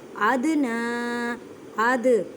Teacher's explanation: دال کو ہلا کر پڑھیں, کلکلہ کا قاعدہ کریں